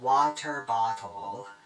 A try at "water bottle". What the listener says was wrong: Water bottle. You guys say it like robots. You don't pronounce the T in it. Water bottle.